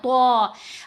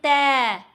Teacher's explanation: زبان دانتوں کے پیچھے لگ رہی ہے، جو اوپر والے سامنے کے 2 دانت ہیں نا بڑے والے، ان کے پیچھے زبان لگتی ہے اور منہ کو ایسے کر کے کھولنا ہے تو. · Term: موٹی آواز